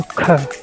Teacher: जिन वर्णों के उच्चारण में वायु तेजी से छोड़ जाए महाप्राण वर्ण कहलाते हैं